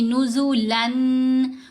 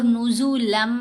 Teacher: تو یہاں ہم نے میم کے اوپر ادغام کیا تو غنہ کیا ساتھ، نزولم، نون کی آواز تو رہی کوئی نہیں، نزولن اور نزولم، فرق ہو گیا نا، یہ ادغام ہے، ٹھیک ہے۔ نون کی آواز مدغم ہو گئی اس میم کے اندر جو تنوین میں نون کی آواز آتی ہے۔